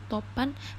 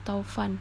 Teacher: perubahan bunyi vokal tunggal atau monoftong menjadi dua bunyi vokal atau vokal rangkap yaitu diftong secara berurutan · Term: diftongisasi